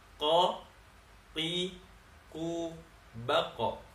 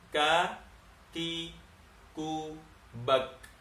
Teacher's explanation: Dia qaf lebih di dalam, kaf di luar sedikit dari makhrajnya huruf qaf.